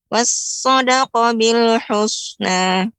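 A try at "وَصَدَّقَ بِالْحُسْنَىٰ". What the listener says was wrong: Shadnya tidak ada tasydid. Wasaddaqa, tasydidnya pada huruf dal. Wasaddaqa. Ya, pengucapan shad tidak, jangan sampai monyong. Wasad ya, tidak. Tapi harus datar, akan tapi yang ditebalkan bagian dalam huruf lidahnya ya, naikkan ke atas bagian ujung dan bagian belakang tinggi, jadi seperti melengkung seperti ini. Ya, naik. Wasaddaqa jangan sampai monyong.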